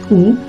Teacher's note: Lidah ditarik ke belakang dan mendekati langit-langit lunak dengan bibir membulat